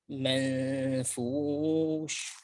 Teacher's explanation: Selanjutnya hendaklah seorang memperhatikan ketika ia mengatakan mengatakan ayat al-manfush, kata al-manfush. Dia hendaklah membacanya dengan menipiskan, mengikhfakan, tapi ikhfanya tipis, bukan tebal pada kata al-manfush. · وننتبه إلى ترقيق النون المخفاة والغنة في المنفوش ترقيق وليس المنفوش تفخيم.